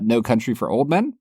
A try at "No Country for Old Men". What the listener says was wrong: every time you say it it sounds like you're referring to the actor Gary Oldman No Country for you don't separate the two words